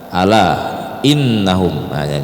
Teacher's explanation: jadi alanya itu empat harakat Mad Jaiz munfasil